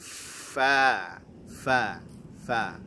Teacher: fa ya punya sifat hamas, fa ada nafas yang mengalir, kemudian rokhawah dia ya, fa ya. Kemudian ya, perhatikan di situ napasnya mengalir, kemudian suaranya pun mengalir ya, fa fa fa.